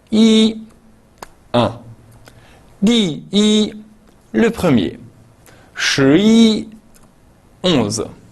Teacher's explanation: Lorsque i est seul ou lorsqu'il forme un numéro, il se prononce au premier ton.